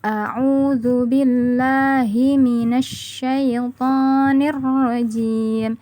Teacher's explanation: terdapat huruf shin dan huruf ro yang bertasydid dan kita harus menekan ketika membaca huruf tersebut